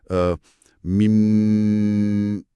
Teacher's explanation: Bila kita sebut mim yang panjang mim bibir atas dan bawah terpaksa ditutup rapat sepenuhnya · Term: huruf mim